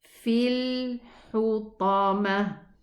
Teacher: The ta is elevated. It's one of the elevation letters.